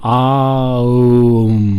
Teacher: There are three distinct sounds, an A, a U, and an M, which blend together, and then they're surrounded, before and after by silence.